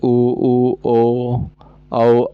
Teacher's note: इनके उच्चारण में ओठ गोलाकार हो जाते हैं। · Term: वृत्त मुखी